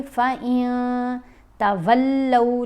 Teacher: نون کی آواز کو ناک میں چھپا کر پڑھا جائے گا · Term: اخفاء